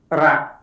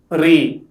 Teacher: The letter Ra is called an alveolar tap sound. It is pronounced by placing the tip of the tongue in the beginning of the hard palate.